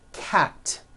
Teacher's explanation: Cat ends with an unvoiced T. T, t. 1 cat, 2 cats.